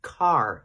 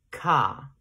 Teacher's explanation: i would pronounce that last r car in standard british english and australian english they would not pronounce that they would say ca we have to keep in mind that · In standard American English, which is the one I'm speaking, I would pronounce that last R · So I think the reason why Australian English and British English sound similar is because they share non-rhoticity. That is post-vocalic R dropping. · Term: non-roticity